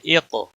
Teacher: قاف موٹا بھی پڑھا جائے گا، اس کے اوپر قلقلہ بھی ہوگا کیونکہ حروف قلقلہ میں سے ہے.